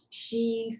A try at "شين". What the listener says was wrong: Not she. Sheen, like Charlie Sheen with the N at the end.